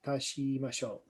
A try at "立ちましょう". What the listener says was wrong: So not she, but tachi.